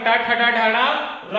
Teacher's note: तो टा वर्ग, टर, टर है ना, टा वर्ग, टा ठा डा ढा रा और री, ये सब मूर्धन्य है